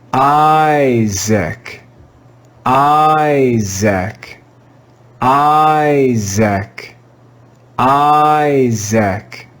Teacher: in this word the first syllable is stressed so this letter i is going to be read with the long i sound